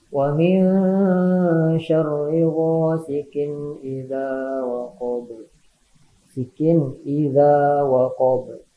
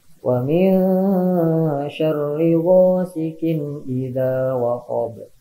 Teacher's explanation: Nah, di sana ada kasroh tanwin menghadapi huruf alif. Dibacanya jelas ya, tidak boleh berdengung atau tidak boleh ditahan. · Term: idhar